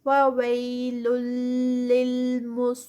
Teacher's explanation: صاد جو ہے آگے ہیوی، اور لین میں جو ہے یہ یا مدہ تو یہ 4 کاؤنٹس پہ